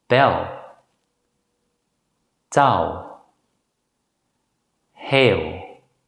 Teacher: If the letter L appears immediately after a vowel, it's usually pronounced as the dark L in English